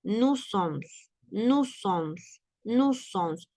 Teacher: Pronunciamos solo una S